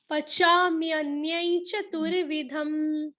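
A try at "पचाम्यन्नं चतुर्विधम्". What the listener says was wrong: आप क्या कर रहे हो, आप ना पचाम्यन उसके बाद वापस बोल रहे हो य एक बार और य जो दूसरा य आ रहा है वो पूरा आ रहा है आपका। पचाम्यन्नै, पचाम्यन्नै। आपका पचाम्यन न्याय आ रहा है। हाँ, थोड़ा उस पे वर्क। म्यन्नै। ई की मात्रा के अंदर थोड़ा सा अनुस्वार जोड़ो, बिंदी भी लगाओ उस पे ना। पचाम्यन्नै।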